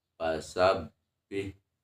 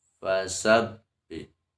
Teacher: ujung gigi seri atas ditempel ke bibir bagian bawah atau bagian yang dalam, bagian yang basahnya. Karena makhraj fa itu sendiri adalah asyafatain, dua bibir, tapi bukan berarti ditempelkan dua bibirnya.